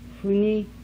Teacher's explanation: Voiceless bilabial fricative allophone.